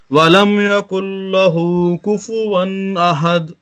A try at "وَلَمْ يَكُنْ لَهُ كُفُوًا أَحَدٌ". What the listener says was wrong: اب دیکھیں پھر دال چھوٹ گیا.